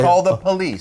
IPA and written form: kɔːl ðə pəˈliːs (CALL THE POLICE)